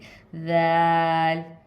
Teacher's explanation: नरमी से अपनी ज़बान की नोक को सामने वाले दांतों की किनारे पे, यानी कि नोक पे टच करेंगे तो दाल की आवाज़ निकलेगी